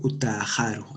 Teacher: el alargamiento compensatorio por elisión de consonante, Utajaro, hay una elisión de la W, ¿no?